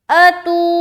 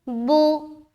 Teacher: تو میں کھینچ رہے, بو میں بالکل نہیں کھینچنا